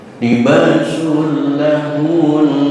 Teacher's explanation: berhenti di nun tasdid, ditahan gunnah musyaddadah